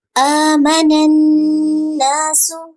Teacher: نون شدید کی آواز ناک میں لے کے جائیں گے